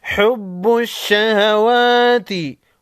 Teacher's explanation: واو کے اوپر کڑا زبر ہے، ایک الف کے مقدار کھینچ کر پڑھیں گے